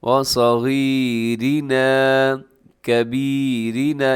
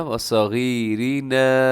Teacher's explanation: را باریک ہے، تھوڑا تھوڑا لمبا لازمی کیجیے گا